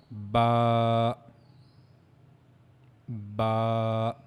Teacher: pronounced by the inner wet part of the lips. So inner side of the lips you have to connect the inner parts of the your of your lips and that's how you have to pronounce ba ba. · Ba, ba, as it's written there, pronounced by the inner wet part of the lips